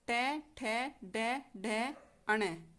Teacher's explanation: मूर्धा आप ऐसे ले सकते हैं कि तालू और दांतों के बीच की जो भी स्थिति होती है उसको मूर्धा कहा गया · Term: मूर्धनीय